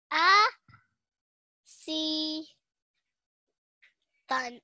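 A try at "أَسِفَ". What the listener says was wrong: A. Si. Fan. It's a fa. This fa. This is a fa.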